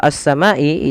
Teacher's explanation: sini ada alif lam kita namakan dengan alif lam syamsiah yaitu alif lam yang dia tertulis tapi tidak dibaca lamnya